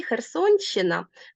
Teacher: херсонщина н буде пом'якшений